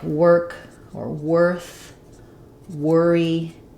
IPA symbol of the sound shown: ɚ